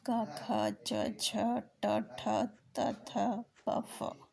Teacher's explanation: आघोष प्रत्येक वर्ग का पहला और दूसरा वर्ण आघोष है।